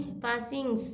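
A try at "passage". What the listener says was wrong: इंग है लास्ट में, इंग भी नहीं है। तो जी को जी ही बोलेंगे ना, इंग थोड़ी है, ING नहीं। पैसेज। पैसेज।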